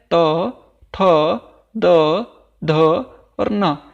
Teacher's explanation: ये वाला सा दंत्य सा है, अर्थात इन वर्णों को उच्चारण में हमारी जिह्वा दांतों को स्पर्श कर रही है। तवर्ग में आता है त, थ, द, ध और न, ये सभी क्या हैं दंत्य हैं।